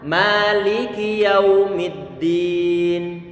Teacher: Ma-nya kita panjangkan dan dia tipis.